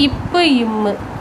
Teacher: மேல் உதடும் கீழ் உதடும் பொருந்த இவை தோன்றுது